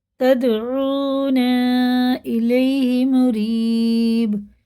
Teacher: یہ مد منفصل ہے، 4 الف کے برابر سے بھی کھینچ کے پڑھنا ہے